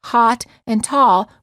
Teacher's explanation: many Americans pronounce hot and tall with the same vowel sound. The O sound.